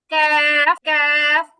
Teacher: অনেকে কাফ করতে গিয়ে কাফ এরকম ধাক্কা দিয়ে ফেলে কফের মতো, এটা হবে না, কারণ এটা হচ্ছে জিহ্বার গোড়া না, জিহ্বার গোড়া থেকে আরেকটু সামনে। জিহ্বার গোড়া থেকে আরেকটু সামনে ওই অংশটা উপরের তালু বরাবর লাগবে, দেন উচ্চারণ হবে ক্যাফ, ক্যাফ।